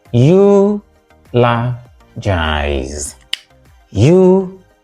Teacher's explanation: Stressed on the first syllable, what we have is eulogize